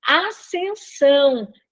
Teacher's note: é como se nós tivéssemos apenas um s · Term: dígrafo